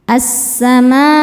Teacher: Cara bacanya diidgamkan atau dimasukkan. Jadi alif lamnya jangan dibaca. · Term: alif lam syamsiyah